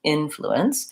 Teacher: the in is going to be a little bit longer and fluence is going to be a little shorter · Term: syllable stress